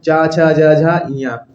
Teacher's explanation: तालु से इसका उच्चारण होता है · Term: च वर्ग